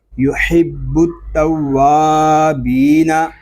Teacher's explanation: اور با مشدد ہے، اس کو جماؤ کے ساتھ ادا کریں گے کیونکہ با حروف کلکلا میں سے ہے